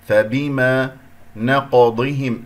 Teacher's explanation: القاف مقلقلة قلقلة صغرى فانتبه لها، ولا تنسى بأن القاف هي من حروف الاستعلاء، مرتبتها هنا ساكن مرتبة الرابع، إذا أقلقل ولا أنسى التفخيم.